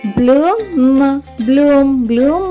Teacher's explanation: sleep అంటే నిద్రపోవడం తర్వాత పదం బి ఎల్ డబల్ ఓ ఎం పిల్లలు బి ఎల్ యొక్క శబ్దం భల కాకుండా బ్ల అవుతుంది